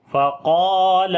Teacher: قاف اور الف دونوں کو موٹا پڑھیں گے